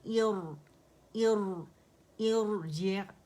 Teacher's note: हमजा जो है वो अक्सुल हल्क से अदा होगा